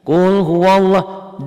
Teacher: Sebelum lafaz Allah baris di atas. Qul huwaw, lafaz Allahnya dibaca tebal dan la-nya ini mad asli. Qul huwallah, dan berlakunya hanya lam di lafaz Allah ya. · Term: tebal tabkhim